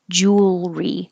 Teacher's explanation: You don't make it three syllables like jewelry. Make jewel, push it together, and make it one syllable. Jewelry. And you need time to go from the L, jewelry.